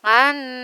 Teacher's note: Nun sukun bertemu dengan nun disebut dengan hukum bacaan idgham bi gunnah. Dibaca melebur dengan mendengung.